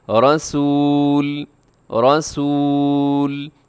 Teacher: را کے اوپر زبر ہے تو را تو پر ہوگی